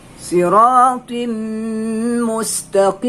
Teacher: memasukkan bunyi tanwin kepada huruf mim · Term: Idgham ma'al gunnah